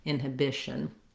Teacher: to be stressing on that second syllable in inhibition but rather your length and your stress is on the bish syllable and then we end with a syllabic n going right from that sh sound